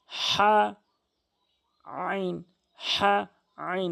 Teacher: হলকের মাঝখান থেকে এ দুটি হরফ